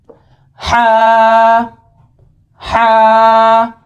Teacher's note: हा को जब हमने अदा करना है तो गले के दरमियानी हिस्से से ये हा अदा होगा। और बाज़ लोग ऐसे पढ़ते हैं हा को हा, तो वो वाला जो हा होता है वो सीने से निकलता है।